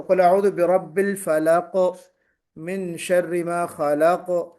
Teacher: فلق میں قلقلہ ہونا چاہیے